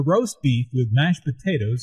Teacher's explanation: the food order is the important information here notice also that tomato soup roast beef and mashed potatoes are compound words the stress falls on the second word in each phrase